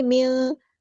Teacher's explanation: اخفا کرتے ہوئے ایک الف کے برابر رکتے بھی ہیں۔